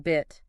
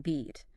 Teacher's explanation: the difference between, say, the short E in bit and the long E in beat